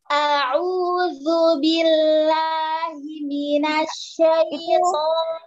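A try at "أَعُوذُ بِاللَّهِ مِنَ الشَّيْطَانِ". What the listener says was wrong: Ya, itu lamnya lepas, lamnya lepas. Jadinya dia tetap powerful, cuman powerfulnya tuh maksudnya tuh nempel ya, tapi tidak digetak. Terus keluar. Billahi, coba.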